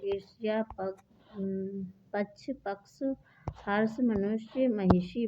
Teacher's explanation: जीभ के अग्र मध्य भाग द्वारा मूर्धा तालु से ऊपर के स्पर्श करने से होता है। सा ध्वनि केवल संस्कृत के तत्सम शब्दों में है, ठीक है। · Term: मूर्धन्य व्यंजन